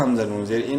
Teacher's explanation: نون مشدد ہے، غنہ کریں گے